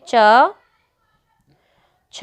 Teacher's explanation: आप जब बोलोगे तो पीछे जो ध्वनि आ रही है वो अ की आ रही है